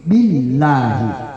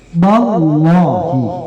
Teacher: Jadi lafzul jalalah itu apabila didahului oleh baris di atas, maka bacaannya tebal.